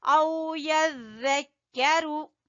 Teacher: زال کو نرمی سے ادا کریں گے زبان کی نوک اور اوپر والے سامنے والے دو دانتوں کے سرے سے